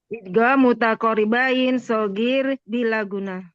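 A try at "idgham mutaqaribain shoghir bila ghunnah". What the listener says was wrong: Asanti, Masya Allah. Barakallah fiik. Umi Sri.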